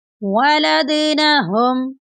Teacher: دال ساکن ہے، دال ساکن پر کلکلا کریں گے